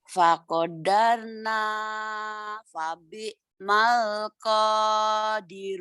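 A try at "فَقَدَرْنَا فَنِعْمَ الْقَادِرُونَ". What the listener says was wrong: Babi mal. Karena Ibu berpikir itu nun itu ba, titiknya di bawah. Itu kan titiknya di atas.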